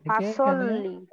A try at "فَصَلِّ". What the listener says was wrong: এটা হবে ফাসল্লি, স এটা মোটা হবে, সল্লি উচ্চারণ করতে হবে এবং এখানে গুণা হবে না। আমরা কি জেনেছিলাম, নুন সাকিনের পরে যদি হরফে হালকি থাকে, অর্থাৎ হামজা হা আইন হা ওয়াইন খ থাকলে গুণা হবে না।